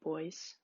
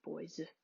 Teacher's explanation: saying voice with more of an s sound rather than the standard boys with that final z sound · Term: final z devoicing, final Z devoicing